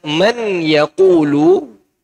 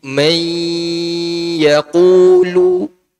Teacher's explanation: Kenapa? Sebabnya ada nun sukun bertemu dengan ya, sehingga dia dihukumi apa? Dihukumi idgham bi gunnah.